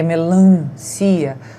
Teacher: Então, vejam que muita gente acha o lan da melancia forte, o tan da substância forte e o tan do substantivo também, por uma questão de comparação de som nasal, porque melancia, o som sai pelo nariz mesmo